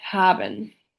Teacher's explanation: The glottal fricative can be heard clearly in the word haben.